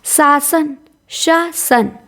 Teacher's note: शासन में दंत्य स रहेगा